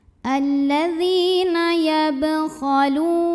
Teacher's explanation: Berikutnya ada hukum qalqalah sughra karena ada huruf qalqalah yaitu ba yang sukunnya sukun asli dan ada di tengah bacaan. Maka dibaca memantul dengan pantulan yang kecil